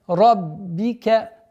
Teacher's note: Удваиваем ба и с касрой